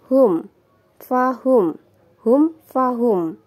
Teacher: mim sukun bertemu dengan huruf Fa Ini bacaan idhar syafawi kita baca dengan jelas